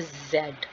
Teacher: जब हम Z बोलेंगे तो वाइब्रेशन प्रोड्यूस होगी जो आपकी फिंगर टिप को महसूस होगी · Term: voiced